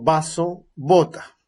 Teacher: va a pronunciar como una consonante oclusiva